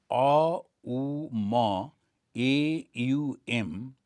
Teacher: The A it begins without any touching anything. And it says it is coming from the navel.